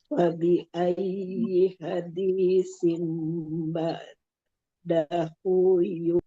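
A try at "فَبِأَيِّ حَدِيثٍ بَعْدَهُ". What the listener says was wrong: Tidak, tidak. Sudah oke. Sudah oke. Barakallah fik. Bagus.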